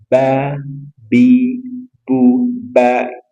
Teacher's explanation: ba dua bibelah dipertemukan dan dirapatkan